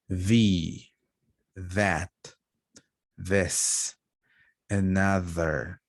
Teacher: The one with a voice is th. You can feel the vibration here. You can feel your vocal cords vibrating. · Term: voiced